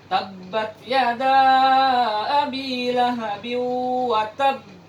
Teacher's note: jadi kita berhenti di tasdid, tanda tasdid. Kita berhenti kurang lebih 2 harakat. Kemudian kita masuk ke bunyi qalqalahnya.